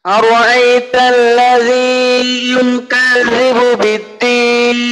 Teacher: এই র ঠোঁটটা মনে হয় একটু গোল হয়ে যাচ্ছে উচ্চারণের সময়, এটা একটু খেয়াল করবেন যেন ঠোঁটটা খোলা থাকে।